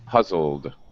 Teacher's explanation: the puzzle has a voiced sound. Okay, your vocal cords are vibrating with the L, puzzle. So now our ed has a D sound, but no extra vowel sound.